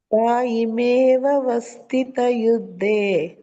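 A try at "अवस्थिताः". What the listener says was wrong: ವಸ್ತಿತ ಅಲ್ಲ ಮಾತಾಜಿ, ತಾ ಇದೆ.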